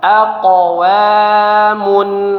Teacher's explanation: Kalau huruf qf atau huruf qalqalah berada di tengah-tengah seperti ini, maka pantulannya kecil, suaranya tidak sampai terputus ketika kita membaca. Ya, jangan aq wa bukan aqwa tapi aqwa.